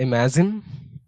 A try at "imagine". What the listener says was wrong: It's not Z. Not imagine. It's J. J. Imagine.